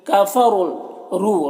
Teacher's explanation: را کے اوپر پیش ہے، را کو پر پڑھیں گے، اور واو مدہ ہے، 1 الف کے برابر کھینچیں گے۔